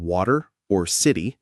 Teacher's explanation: It can be a flapped T like a soft D in water or city.